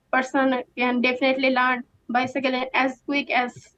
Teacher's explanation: in terms of the sentence stress she puts the stress on definitely